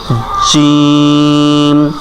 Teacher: জিহ্বার মধ্যখান ঠিক তার উপরে লাগাইতে হবে